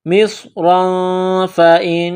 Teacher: تنوین کے بعد فا ہے تو یہاں اخفا کریں گے ، مصرا فإن، نون مشدد ہے تو آواز ناک میں چھپائیں · نون مشدد ہے تو آواز ناک میں چھپائیں گے، غنہ کریں گے